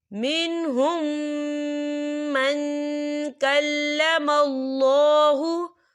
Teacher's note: यहाँ मीम साकिन है और मीम साकिन के बाद फिर मीम आ रहा है, तो यहाँ पर इदगाम शक्फी हो रहा है, तो हम यहाँ गुन्ना भी करेंगे।